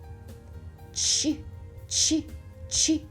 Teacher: А чи можемо ми проспівати цей звук? Ні, не можемо. Звукова ниточка рветься. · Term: звук ч